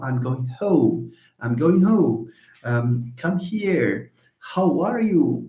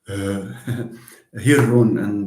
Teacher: In English the h sound is voiceless. The h sound in Arabic is voiced.